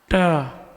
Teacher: जिह्वा को पीछे ले जाओ, दांत में लगने मत देना, और बोलो ता